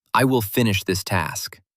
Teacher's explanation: Notice how your voice naturally falls at the last word. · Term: falling tone